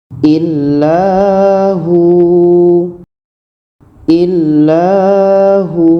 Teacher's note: Jadi di sini ada waw mati sebelumnya baris depan, maka hu ini dibaca panjang karena ada waw mati sebelumnya baris depan